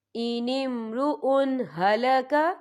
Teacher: فی الکلالہ ان امرؤ ہلک، یا دیکھیں ان امرؤ، حمزہ کے اوپر تنوین ہے، تنوین کے بعد جو ہے ہا آ رہا ہے، اور ہا جو ہے حروف ہلکی کا ورڈ ہے تو ہم یا اظہار کریں گے، ہم اسے بنا غننے کے پڑھیں گے